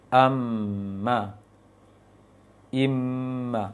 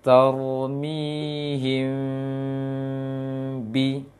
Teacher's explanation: mim sukun bertemu dengan ba dengan cara menyamarkan bunyi mim, yaitu dengan merenggangkan bibir dengan celah kecil saja, sedikit, tidak terlalu lebar. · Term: mim yang samar